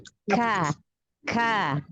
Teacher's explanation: Pangkal lidah bagian bawah, jadi sedikit ke bawah dari huruf qaf. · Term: huruf kaf